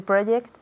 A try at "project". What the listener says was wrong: There's a jota. There's a J there. Remember with the J? Here in Spanish, no sé, I don't hear the J.